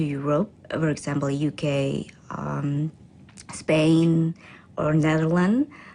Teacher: in response to the second question her voice Rises to show expectation she then lists the countries with her voice pitch Rising